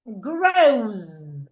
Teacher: The S after the W sounds like a Z.